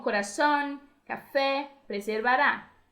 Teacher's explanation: Agudas ou oxítonas, palavras que tienen la última sílaba tónica